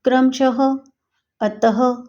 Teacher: अ के बाद दो बिंदी इसे विसर्ग कहते हैं इसका उच्चारण ह के समान होता है